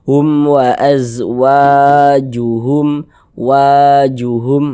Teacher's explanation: Jadi, kalau ada alif sebelumnya ada harakat fathah, maka huruf yang memiliki harakat fathah ini dibaca panjang. Sehingganya wa kita baca panjang. Mad thobi'i panjang dua harakat.